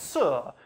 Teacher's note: you've got that constriction right up at your alveolar ridge behind your teeth, creating turbulence. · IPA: [s]